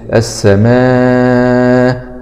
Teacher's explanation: مد واجب متصل مع المد ست حركات، لأن الهمز هنا متطرف